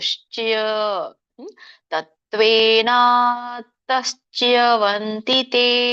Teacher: ಚ ಶ ಚ ಯ ಮೂರು ಕೇಳಿಸ್ಬೇಕು.